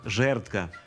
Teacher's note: Винятком також є слово «жердка», адже в ньому звук «д» звучить як «т»